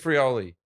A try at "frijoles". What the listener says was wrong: Frioli. Not with an I like that. You're like pluralizing it like Italians. frijole.